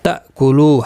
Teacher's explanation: حمزہ ساکن کو جھٹکے کے ساتھ ادا کیا جائے گا